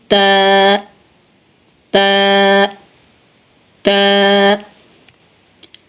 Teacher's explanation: ता नोके जुबान और सनाया औलिया की जड़े